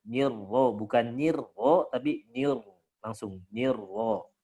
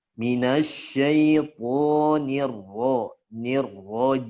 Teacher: Nirro yang tipis nunnya tapi ro-nya langsung tebal.